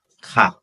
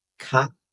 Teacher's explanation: Ca is a falling tone. Ca is a high tone.